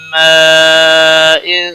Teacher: ماء مد متصل ہے، بڑی مد 5 الف کے برابر کھینچ کر پڑھیں گے۔ تنوین کے بعد حروف اخفا کا حرف آیا ہے، اخفا حقیقی ہوگا، گناہ کے ساتھ پڑھیں گے